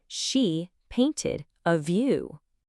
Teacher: You should have heard that voiced vibrating VV sound right at the beginning.